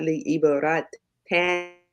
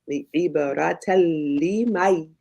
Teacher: we don't pronounce the N. We don't hear the N sound. So it's not li ibarat tan, but talima.